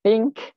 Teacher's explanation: Dia think tu hujung lidah tapi tak bersuara